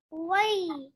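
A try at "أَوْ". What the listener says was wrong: Not why. Aw. Hamza Fatah wow sukun. Aw. Hamza Fatah will be merged into wow sukun.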